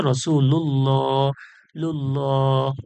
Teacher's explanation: আল্লাহর লামের পূর্বে পেশ আসছে জবর কিংবা পেশ আসলে আল্লাহর লাম পুর হবে